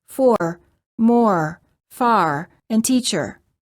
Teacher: Unlike the British R, the American R is always pronounced. It's never silent.